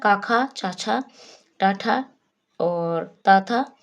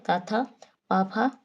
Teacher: ऐसी ध्वनियां जिनके उच्चारण में नाद या गूंज नहीं होती है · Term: अघोष वर्ण